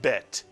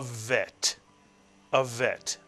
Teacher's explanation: If you take the dagesh out of the bet, it is no longer pronounced as a B in English, but as a V in English.